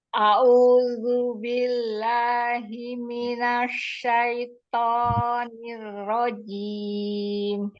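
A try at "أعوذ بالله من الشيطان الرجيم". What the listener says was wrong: Zu, a'udzu. Ujung lidahnya keluarin dikit. A'udzu billahi minasyaitonir rajim.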